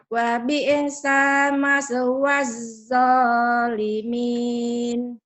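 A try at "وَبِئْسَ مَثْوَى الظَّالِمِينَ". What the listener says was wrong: Wa bi'sa. Jangan ada e-nya ya. Wa bi'sa.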